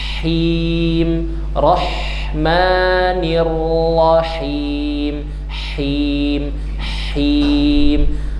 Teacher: Ha wastul halqi, tengah tenggorokan, di atas jakun, pita suara ya. Jadi nafasnya dulu baru barisnya.